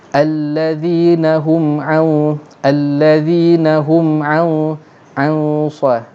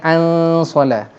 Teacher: Masalahnya sekarang ni, selepas nun mati ni huruf tebal, huruf dalam isti'la, itbaq pula, huruf sad. Jadi maka dengungnya tebal. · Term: ikhfa hakiki